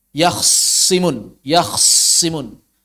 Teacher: tanya dimasukkan ke dalam Sad sehingga sadnya bertasdid taknya hilang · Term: idgham